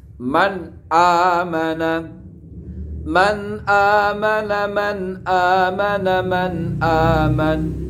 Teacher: man di sini nunnya tidak boleh dibaca samar atau gunnah atau iklab. Langsung man amana, man amana, man amana, man aman. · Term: idhar